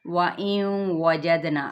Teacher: ٹھیک ہے، یہ ہے حمزہ جس کو ہم نے باریک ادا کرنا، وَإِن نہیں کر کے کرنا، حمزہ باریک ہوتا ہے، یاد رکھیے گا یہ لفظ. اور یہ حمزہ جو ہے وہ اقصی حلق سے ادا ہوتا ہے